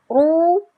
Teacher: ada huruf ro berharokat dhammah, namanya ro tafhim, dia dibaca tebal.